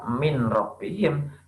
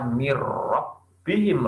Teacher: Cara membacanya dengan cara tidak mendengung. Jadi kebalikannya dengan idgham bi gunnah. · Nah, mirrobbihim tidak dibaca min robbihim, tapi dibaca mirrobbihim, langsung masuk ke huruf roknya. Nih, nun sukun bertemu dengan huruf rok. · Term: idgham bila gunnah